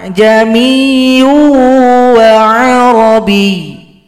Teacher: Itu namanya tashil, meringankan bunyi hamzah.